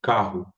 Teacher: carro não termina com o, né? Termina com um U, carro. A gente fala com U.